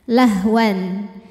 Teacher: Hamzah wasal ini kalau di tengah enggak dibaca